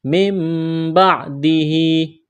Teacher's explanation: نون ساکن کے بعد با ہے، یہاں پر اقلاب کریں گے، یعنی نون کو میم سے تبدیل کرنا ہے۔